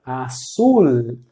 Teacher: nunca com som de u, como a gente faz em português no final